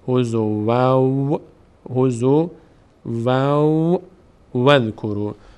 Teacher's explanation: تتخذیات الله و این وا فتحه سا جای خودش باقیست و این تنوین فتحه دوم تبدیل میشه به وا که نماینده نون ساکن بود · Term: ادغام